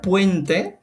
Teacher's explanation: el primero por ejemplo es un diptongo creciente